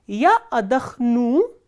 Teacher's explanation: the stress is on u, which is the ending